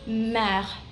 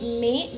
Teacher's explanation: It is not me because the R in the end is pronounced, and it is mer, mer.